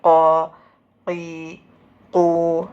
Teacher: ഖാഫിൻ്റെ മഖ്റജ് നാവിൻ്റെ പിൻഭാഗം മേലെ അണ്ണാക്കിൻ്റെ മൃദുലമായ ഭാഗത്തോട് ചേർക്കുന്നു.